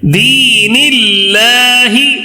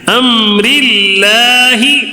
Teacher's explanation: یہاں پہ اللہ کا لام ہے، اس سے پہلے زیر آیا ہے تو اس کے لیے اللہ کا لام جو ہے نا، اس کو کیسے پڑھنا ہے؟ باریک پڑھنا ہے.